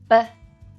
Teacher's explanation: as a voiced bilabial stop